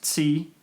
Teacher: Another idea I had, which I haven't put down here yet, is that t would become, I don't really know how to show this, but t would become ts, so that t becomes an affricate before front vowels